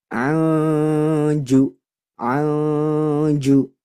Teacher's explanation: Jadi harus didengung yang lama. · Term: ikhfa